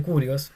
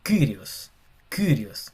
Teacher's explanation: Es como una I pero con una boca de U. Como una I un poco parecida a lo que se usa en Francia, al francés, como Kyrios.